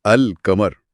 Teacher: जब आप यह लफ्ज बोलते हैं तो ओ अल कमर। लाम की आवाज बिल्कुल साफ और वाजे सुनाई देती है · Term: इजहार कमरी